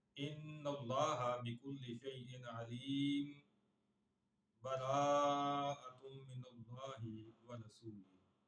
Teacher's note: اور تیسرا آپشن یہاں پہ یہ ہے کہ سکتہ کیا جائے، یعنی سانس توڑے بغیر ہلکا سا ٹھہر کر آگے سورہ توبہ کی آیت شروع کر دی جائے